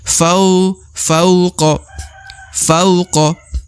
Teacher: huruf wau sukun di depan huruf Fa Ya berharakat a maka diayun sekali